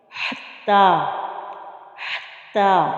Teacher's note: ہا کو ہم نے وسط حلق سے ادا کرنا ہے۔ پہلے ہم نے ہا کو انتہائی حلق یعنی سینے کی طرف سے ادا کیا تھا، اور اس کو ہم حلق کے درمیان سے نکالیں گے، اس ہا کو۔